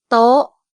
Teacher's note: Il y a un signe de tonalité, c'est le maitri, donc le ton est haut.